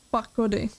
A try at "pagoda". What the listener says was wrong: Pagoda, ne pakoda.